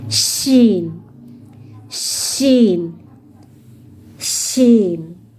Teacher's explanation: Shin, dia mengeluarkan udara yang banyak. Ayo, angkat tengah lidahnya menuju langit-langit atas.